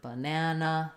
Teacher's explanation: the word banana, it's short, long, short